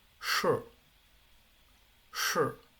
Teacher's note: básicamente suena simplemente la SH, no suena la I